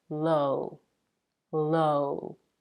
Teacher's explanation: your mouth around your lips and drop the jaw a little the jaw is not as open as in the word law but it's still somewhere in the middle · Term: diphthong o